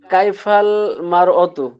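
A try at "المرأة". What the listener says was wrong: মার মার অত না, মার আতু। মার আতু ইমরাতুন, এই যে বললাম শুরুতে, শুরুতে আলিফ লাম আসলে সেটা কি বলতে হয়? আল মারাতু বলতে হয়।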